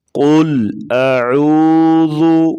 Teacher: قل کا قاف جو ہے، قاف کو موٹا پڑھا جاتا ہے